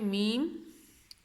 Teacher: میم بھی دونوں ہونٹوں کو ملا کے میم